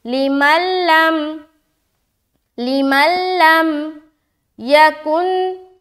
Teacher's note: آگے یہ سمجھ آگی، آگے چلیں، ذالک، ذالک، ذا کو کھینچ رہے کیونکہ کھڑا زبر ہے، لی کا جلد ادا کریں گے، لمن لم، لام زیر لی، میم لام زبر مل، لام میم زبر لم، یہاں پر نون ساکن، نون ساکن کے بعد پھر لام ہے، ادغام تام یعنی کہ بغیر غننے کے ادغام کریں گے، ملائیں گے۔ ادغام کے کا معنی ہے ملانا، بغیر غننے کے یعنی کہ سمپل ملا دیں گے، لمن لم، لمن لم یکن، یکن، یا زبر یا، کاف نون پیش کن، یکن، اس کے بعد نون ساکن کے بعد حمزہ، اظہار کریں گے، رکنا نہیں ہے، پڑھ کر نکل جانا ہے۔